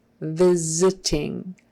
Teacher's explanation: sounds together so visiting the V is voiced and therefore um we're going to voice this s and turn it into a z sound